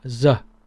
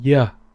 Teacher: the northern Vietnamese will pronounce this as Za as in zebra za in southern well pronounce it's in yeah as year yeah